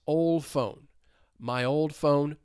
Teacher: when the T or D comes between two consonant sounds, they may elide. So instead of old phone, and you distinctly hear those 2 words, that D elides old phone. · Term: elision